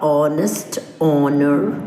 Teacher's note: we do not pronounce the sound H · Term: h salent words